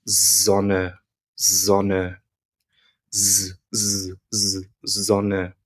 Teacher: Letter S in German is basically the same as it is in English. However, if a word starts with an S, it makes more of what we would pronounce as a Z. So, for example, the word for sun, as in the sun in the sky in German, is Sonne, Sonne, z, z, z, Sonne.